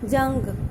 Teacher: अनुस्वार की आवाज़ हमेशा जब लिखते हैं तो नाक में से आती है। जैसे जंग, बिंदी ऊपर बोली जाती है, नाक में से जो है आवाज़ बाहर आती है